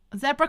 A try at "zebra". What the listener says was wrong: Okay, you know, it should be zebra. I'm looking at it, and there's no double E in it, so no, it should not be zebra. However, yep, us Americans, zebra.